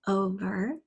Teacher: we have a long open o sound and then ver